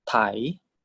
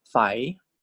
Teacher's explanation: And the Sara I, Mai Malai. No tone mark, so default tone is tone 4, rising tone.